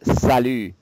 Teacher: I want you to completely ignore the T. Don't pronounce it.